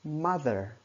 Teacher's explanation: trọng âm của nó sẽ rơi vào từ ma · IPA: /ˈmʌðər/